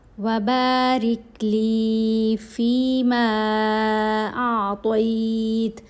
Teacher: حرکت کے برابر لمبا کیا کیونکہ اس مد کی وجہ سے، یہ مد منفصل ہے، اس مد کو 3 حرکت کے برابر لمبا پڑھا جائے گا